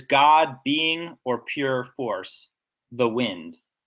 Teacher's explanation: So God is stressed. I think the first part of being is stressed, pure force, and the wind. I think those are all stressed. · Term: stressed syllables